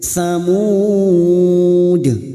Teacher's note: Kalau samuda itu masih panjang, tetapi karena dibaca pendek maka bunyinya samud. Harus dipantulkan karena kita wakaf pada akhir huruf dal yang mempunyai sifat pantulan atau qalqalah.